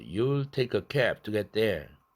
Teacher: cab 다음에도 to 자음이 있으니까 비개방했어요.